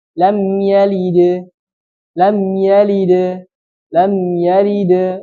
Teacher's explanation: pantulan itu mendekati dengan harakat fathah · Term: qqalah